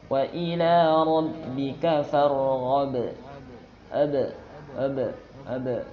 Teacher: Dipantulkan. Dia bahkan syiddah. Ba syiddah. Tertekan. Dan efeknya itu ada qalqalah.